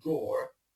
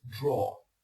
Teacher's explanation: if you're American, you might want to add the final R at the end of the word, so this would be something like drawer.